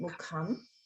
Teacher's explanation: just notice the ka sound mahaprana in mukham